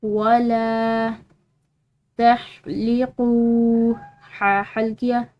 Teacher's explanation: कौफ के बाद वाव साकिन है तो इसको एक अलिफ की मिकदार लंबा अदा करेंगे।